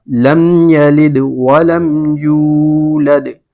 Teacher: یولد میں یو کو جو ہے ایک الف کے برابر کھینچ کر پڑھیں گے، یولد، دال پہ دوبارہ قلقلہ ہوگا۔ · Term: واو مدہ